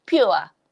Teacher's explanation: this is an example of an English word where you add a y sound after pa before ua. So we say it as pure.